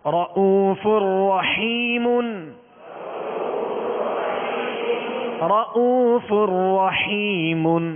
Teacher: آواز اور منہ کھول کر را کو پر کرتے ہوئے پڑھیں گے اور آواز کو کھینچیں گے، زبر کو کھینچیں گے نہیں.